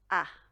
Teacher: kind of like the sound that we have in the word tap, a little open